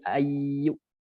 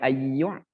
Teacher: Hamzah dia mentok. Kalau ain ada ngalir dia. Ayyu itu ain.